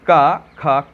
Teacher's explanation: इनमें जो दबाव पड़ता है वो कहाँ? गले पर पड़ता है और कहीं पर दबाव नहीं पड़ता है। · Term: कंठस्थ